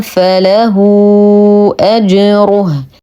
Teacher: لدينا هاء مضمومه نتم ضمتها ونصها صله كبرى بمقدار اربع الى خمس حركات لانها سبقت في بدايه السطر الاخر بهمز اذا نعيد ونكرر ننتبه